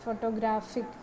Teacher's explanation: ഫോട്ടോഗ്രാഫിക് എന്ന് പറയുമ്പോൾ അതിൽ പ്രൈമറി സ്ട്രെസ് വരുന്ന ഗ്രാഫിക് എന്ന് പറയുന്നതിൻ്റെ അവിടെയാണ്